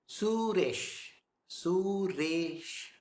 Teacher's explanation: The Su is short. Re, slightly long. Sh, it's short.